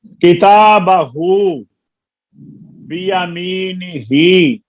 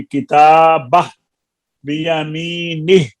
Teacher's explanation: हाँ, किताबहू बियमीनिही, जब हम किताबा के ऊपर ठहरेंगे तो हु की पेश खत्म हो जाएगी, किताबह बियमीनिह। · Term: वक्फ बिल इस्कान